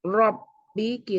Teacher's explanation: Di sini ada 3 hukum, yaitu huruf ro yang dibaca tafkhim, mat asli, dan idgham bigunnah. Huruf ro dibaca tafkhim karena berharokat fathah, jadi tebal ya.